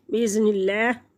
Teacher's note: अल्लाह के नाम से पहले लफ्ज़ के नीचे ज़ेर है तो अल्लाह को बारीक पढ़ेंगे। बिइज़्निल्लाह वक़्फ़ मुतलिक, तो वक़्फ़ मुतलिक वक़्फ़ करेंगे, सांस लेंगे।